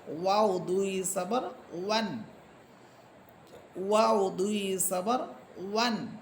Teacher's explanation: দুই ঠোঁট গোল করে দুই ঠোঁটের মাঝখানে যে শূন্য জায়গা থাকবে সেখান থেকে ওয়াও উচ্চারিত হয়।